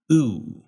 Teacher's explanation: start with a tongue position that was high up and in the middle of your mouth, before pulling back to oo